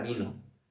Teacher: en la palabra vino la tónica es vi y la átona no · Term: sílaba tónica